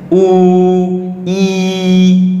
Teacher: ই উ এগুলো উচ্চারণ যদি করো তুমি দেখবে একদম উপরে চলে যাচ্ছে জিভ, উ ই উপর দিকে চলে যাচ্ছে, তাই এটাকে বলা হবে একদম উচ্চ উচ্চ স্বরধ্বনি।